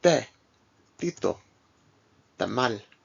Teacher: T is similar to the English T except that it is, again, more dental. So it's like the P and K sounds, the T is not aspirated.